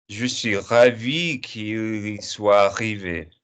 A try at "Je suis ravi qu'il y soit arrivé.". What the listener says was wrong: Now say it for me like you're not chanting. Say it for me like in French. Ouais, je suis ravi qu'il y soit arrivé.